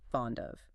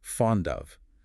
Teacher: because the first word ends in a consonant sound, the D, and the second word begins with a vowel sound, the O, the boundary between the words dissolves entirely · The consonant physically detaches from the first word and attaches to the beginning of the second word. It becomes fond of. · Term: connected speech